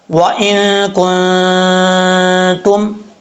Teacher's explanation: اخفاء کا غنہ، ایک الف کی مقدار جو ہے وہ غنہ کیا جائے گا